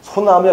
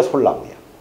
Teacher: 니을 받침 뒤에 니은, 디귿, 시옷, 지읒 앞에서 이 니을은 무조건 탈락이 되고요. 탈락이 돼야만 표준어로 인정을 합니다. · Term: 니을 탈락